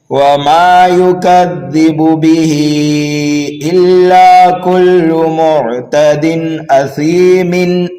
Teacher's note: آیت نمبر 11 کو 12 سے ملائیں گے تو قاعدہ یہاں پر بدل جائے گا، اس لیے کہ تنوین کے بعد حروف حلقی میں سے حمزہ آنے کی وجہ سے یہاں پر اب اظہار حلقی ہوگا